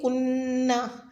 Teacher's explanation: لو کنہ میں نون مشدد پر غنہ کریں